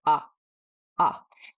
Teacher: When you say ah, you'll notice that there's this click when your throat opens and the sound starts.